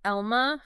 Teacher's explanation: You hear how all those vowels are kind of in the front of your mouth? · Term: vowel harmony